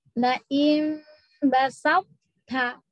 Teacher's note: To-nya hanya hilang qalqalahnya saja. tapi dia masih punya itbak. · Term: idgamnya nakis